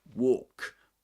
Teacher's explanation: in American English, we can say walk with a short O sound. O, shorter.